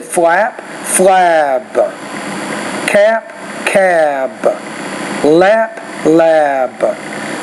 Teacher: So you don't say these sounds with the exact duration, even though they're all one-syllable words. The words that end in B, they will be a little bit longer than the words that end in P